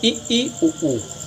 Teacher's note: संवृत स्वर इ ई उ ऊ। आप कह सकते हैं कि इनको बोलने में मुख लगभग बंद ही रहता है।